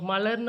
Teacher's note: மலர்ன்னு நம்ம உச்சரிக்கும் பொழுது அந்த லா என்ற சவுண்டு வரும் பொழுது நாக்கு வந்துட்டு மேல முன்னோக்கி தொடும் அதனாலதான் இதை முன்னோக்கு லகரம் அப்படின்னு நம்ம சொல்றோம் அடுத்தது இது வந்து பொது